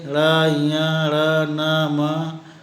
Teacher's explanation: नासिकीय या नासिकीय उन ध्वनियों को कहते हैं जिसमें दोनों ओठ, जीभ, दांत, जीभ मूर्धा या जीभ पश्च और कोमल तालु आदि का स्पर्श होता है, उसी प्रकार जैसे स्पर्श व्यंजनों में, और हवा मुंह में गूंजती हुई नाक के रास्ते निकलती है।